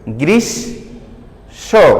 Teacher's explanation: স কিন্তু দুইবার উচ্চারিত হয়েছে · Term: দ্বিত্ব